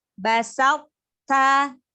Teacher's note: Hanya sifat terkepung. Sebelum ke huruf ta-nya itu tunjukkan sifat itobak pada huruf to-nya. Basal ta. Jadi naikkan pangkal lidahnya. Begitu mau ke huruf ta itu, huruf to-nya itu naikkan.